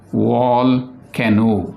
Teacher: Volcano also has three beats, three syllables, but the last syllable is giving long vowel sound, and it is a long, what can we say, it is not accompanied with any consonant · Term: open syllable